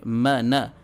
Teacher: کھڑا زبر برابر الف مدہ کے، ایک الف کے برابر ہم اس کو کھینچیں گے